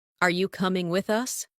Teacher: Rising tone for question.